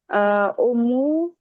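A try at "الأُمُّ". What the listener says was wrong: Al-ummu jangan lupa kalau ummu pakai tanwin pakai alif lam.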